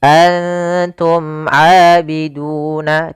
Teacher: Izhar jelas, syafawi berkaitan dengan bibir kita, yaitu makhraj huruf mim di bibir, sehingga dijemahkan dengan izhar syafawi.